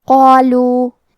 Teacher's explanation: قاف کو اور مد الف کو دونوں کو تفخیم سے پڑھیں گے